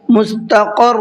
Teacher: بڑا قاف ہے، اور بڑا قاف کو منہ بھر کے پڑھنا ہے، اور را کو بھی پر کر کے پڑھنا ہے۔